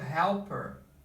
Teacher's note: Aqui acontece, é muito comum, não é 100% das vezes, mas é muito comum que o inglês americano também corte esse H aqui